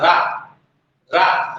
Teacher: रा में थोड़ा सा जीभ मुड़ रही है और लुढ़क भी रही है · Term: लुंठित